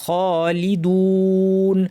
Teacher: সময় আমাদের ওয়াও এর পরে নুন আছে নুন জবর আছে এখানে স্বাভাবিকভাবে টানটা হচ্ছে এক আলিফ কিন্তু যদি আমি নুন সাকিন দিয়ে থামি এটাকে দুই বা তিন আলিফ পর্যন্ত লম্বা করা যাবে